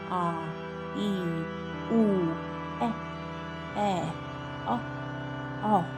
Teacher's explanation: दीर्घ स्वर, इन्हें बोलने में ह्रस्व स्वर से दुगना समय लगता है, जैसे आ, ई, उ, ए, अ, औ।